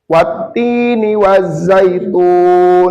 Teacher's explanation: alif lam syamsiah lamnya tidak dibaca · Idgham samsiah. Cara membacanya itu alif lamnya dihilangkan atau dimasukkan ke huruf yang selanjutnya. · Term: alif lam samsiah